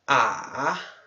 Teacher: a entonação do terceiro tom, né? Que desce o tom e sobe o tom.